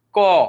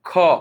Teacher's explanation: দেখো ক এর সময় কিন্তু আওয়াজটা হাতে বাধাপ্রাপ্ত হবে না, বাড়ি লাগবে না। কিন্তু যখন বলছো খ, দেখো একটা বাতাসের ধাক্কা লাগতেছে হাতে। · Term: মহাপ্রাণ